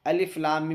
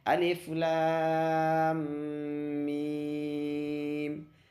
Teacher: لام میں بھی مد لازم، میم میں بھی مد لازم، تو دونوں کو برابر کھینچیں گے